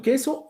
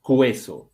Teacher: O sea, no está pronunciándose la U. La U está siendo muda.